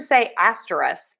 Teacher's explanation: when I'm having a general conversation, I usually say asterisk and just drop the K